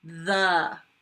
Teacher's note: Lots of buzzing right off the bat.